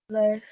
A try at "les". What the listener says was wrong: How are you supposed to pronounce that word? Is S pronounced? It is le.